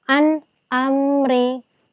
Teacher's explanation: ada nun sukun dengan alif dibaca jelas tanpa mendengung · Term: idhar